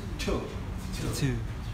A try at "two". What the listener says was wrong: Không phải thu. Không phải thu. Không phải thu.